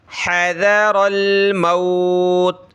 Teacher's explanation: हा को गले से निकालें, हज़रल मौत, हज़र, दाल पे ज़बान निकलेगी, थोड़ी सी नरम करके पढ़ा जाता है इसको। हज़रल, रा को मोटा करें ज़बर की वजह से